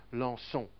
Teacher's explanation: And this cedia's function is to tell me that I must pronounce the C as a soft S sound instead of a hard K sound, which I should do because it's followed by an O.